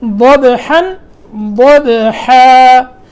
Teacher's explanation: پہلے ضاد موٹا تھا، با میں قلقلہ تھا ضبحن میں